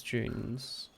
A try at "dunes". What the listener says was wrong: Do you pronounce dunes as June? Dunes. Yeah, I swear you said June. No.